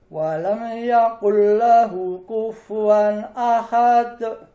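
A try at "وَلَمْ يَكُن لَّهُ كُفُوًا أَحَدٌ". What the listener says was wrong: Nah, sedikit lagi Pak dikeluarkan. Jadi walam yakul. Anginnya dikeluarkan.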